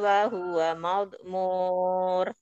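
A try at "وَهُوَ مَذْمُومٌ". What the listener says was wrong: Madmum, mim, bukan ra.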